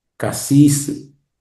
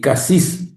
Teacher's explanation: Casis, vocal larga I, y casis, hay una sola I, tiene rabo.